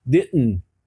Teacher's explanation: É pela glote, você para o ar, você suspende o ar, dá uma paradinha e dá esse som. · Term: glotilizado